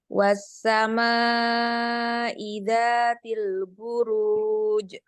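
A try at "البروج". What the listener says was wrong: Jangan ditambah hamzah di ujungnya. Buruj. Jangan buruj. Beda ya?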